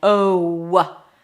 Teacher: In the O as in go, there is a W at the end. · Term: long O